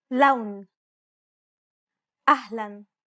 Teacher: Unlike the English L, the tongue is ever so slightly flatter and straighter in Arabic. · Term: Arabic L sound